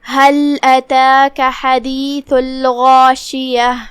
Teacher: ہم ہا کو حلق کے نیچے والے حصے سے ادا کریں گے. لام پہ جزم ہے تو ہم لام کو جزم سے ادا کریں گے اور اسے ظاہر کریں گے. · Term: حرف الہا